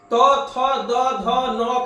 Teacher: त थ द ध न का उच्चारण दांत से